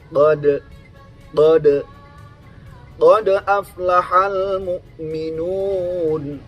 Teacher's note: Sementara huruf dal adalah huruf yang berada di ujung lidah bagian atas.